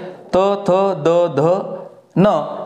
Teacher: त थ द ध न हे दंत म्हणजे दातालाच त्याचा स्पर्श होतो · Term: दंत्य